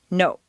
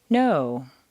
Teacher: in Spanish or Japanese, the word no is, to our ear, clipped or abbreviated